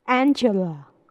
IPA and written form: ˈændʒələ (Angela)